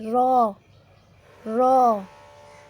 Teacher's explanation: जब ज़बान का किनारा ऊपर वाले मसोड़ों से टक्कर खाए तो रॉ अदा होता है।